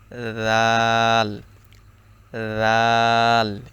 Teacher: থেকে উচ্চারণ করছি জাল সেই একই জায়গা থেকে উচ্চারণ হবে যেমন জিহ্বার আগা উপরের দুই দাঁতের আগার সঙ্গে লাগিয়ে